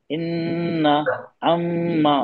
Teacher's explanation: मीम और नून की आवाज को ना हम नाक में थोड़ा लंबा खींचते हैं